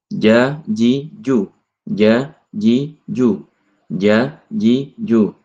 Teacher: huruf jim ini keluar dari tengah lidah · atap mulut bagian atas itu adalah tempat keluarnya huruf jim